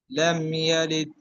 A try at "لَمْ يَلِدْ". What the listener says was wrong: ভাইজান, ডালগুলো কলকলা হয় নাই, ডালগুলো আরো কলকলা করতে হবে, ধাক্কা দিতে হবে, নিচের দিকে নিতে হবে। লাম ইয়ালিদ, এরকম। এই ডালগুলো একটু কলকলা করবেন, আর একটু সুন্দর করে যেন উচ্চারণ গুলো আসে, একদম নিচের দিকে যেন যায়, তখন সুন্দর শোনা